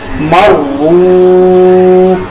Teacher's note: یہاں پہ میں نے را کو پر ادا کیا اور را کے ساتھ واو مدہ کو ایک الف کے برابر لمبا کیا